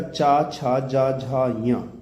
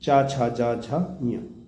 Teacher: हिंदी की तालव्य ध्वनियाँ हैं। तो तालव्य ध्वनियाँ वो हैं जिसका जीभा से पीछे से साउंड आता है